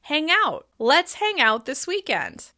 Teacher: Stressing out makes it really clear that I'm suggesting an action.